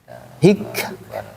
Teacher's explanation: Kalau kaf dia memiliki sifat hamas